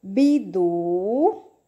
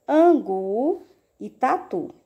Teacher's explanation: a última sílaba é mais forte de todas, no caso, a sílaba tônica